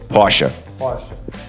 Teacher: You wouldn't say por or por or por. You wouldn't really put emphasis on that R sound, so you would go Porsche.